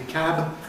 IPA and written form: kæb (cab)